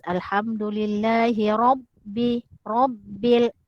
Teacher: Ro lagi berbaris fathah pun dibaca tebal. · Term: ro tafkhim